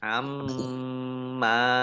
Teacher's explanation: Amma mim tasdid dibaca mendengung atau gunah ditahan 2 harokat.